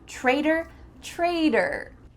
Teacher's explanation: In American English, when there's a T between 2 vowels, we often change that T into a D sound.